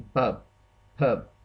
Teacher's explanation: bilabial कहते हैं ये कॉन्सोनेंट होता है produce by using both lips.